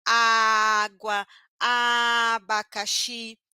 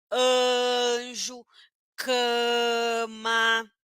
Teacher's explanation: vai ser uma a nasal então quando eu falo anjo cama essa letra a ela muda de som na verdade ela sofre um efeito de Nasal